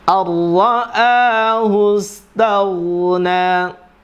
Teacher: nun sukun ketemu ra, idgham bila gunnah, masuk dengan tidak dengung.